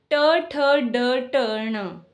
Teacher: इन्हें मूर्धन्य वर्ग भी कहा जाता है या मूर्धन्य वर्ण भी कहे जाते हैं क्योंकि जिह्वा झटके से मुसूड़े को स्पर्श करती है और वापस आ जाती है